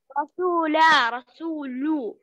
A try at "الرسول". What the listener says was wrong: أيوة كده